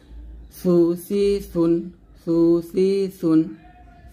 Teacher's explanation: সা জিহ্বার আগা সামনের উপরে দুই দাঁতের আগার সঙ্গে লাগিয়ে সা উচ্চারণ করতে হবে, এবং নরমভাবে আদায় করতে হবে, নরম করে বাতাস বের করে সাটা উচ্চারণ করতে হবে